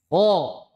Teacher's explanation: Ho itu dari makhoritnya dari pertengahan tenggorokan. Gimana? Tenggorokan di sini tengah.